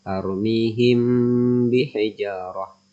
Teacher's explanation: Ikhfa Syafawi adalah bertemunya mim sukun dengan huruf ba sehingga pfalan huruf mim sukunnya menjadi samar-samar didengungkan meskipun keluarnya huruf tersebut di bibir